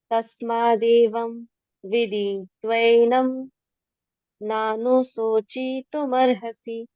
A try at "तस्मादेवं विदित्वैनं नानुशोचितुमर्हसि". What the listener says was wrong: Very good बेटा।